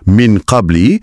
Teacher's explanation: Kalau huruf lepasnya huruf yang tebal dan berat macam qaf contohnya dalam min qabli, dengung yang mendahuluinya pun akan jadi tebal dan berat. Boleh rasa getaran tu dekat pangkal lidah. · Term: ikhfa